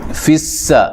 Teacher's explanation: سین کو باریک سیٹی سے ادا کرنا ہے